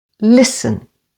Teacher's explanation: And listen, again with the stress on the first syllable.